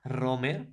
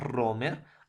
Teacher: la vibración del ápice de la lengua